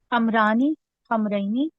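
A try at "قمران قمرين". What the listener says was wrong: नहीं, कमरा क्यों पड़ी है, मीम के ऊपर तो जबर रहेगी ना।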